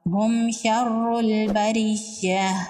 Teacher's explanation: را کے نیچے زیر ہے، را کو باریک پڑھیں گے · اب یہاں پر دیکھیں، میم ساکن کے بعد نہ تو با ہے اور نہ ہی میم ہے، یہاں پر شین ہے، تو یہاں پر اظہار شفوی ہوگا، میم کو ظاہر کر کے پڑھیں گے، میم پر غنہ نہیں ہوگا۔